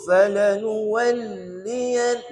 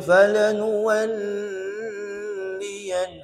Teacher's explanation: Tidak ada dengung pada lam sabdu. Huruf bersabdu 2 huruf je yang dengung, iaitu nun dan mim.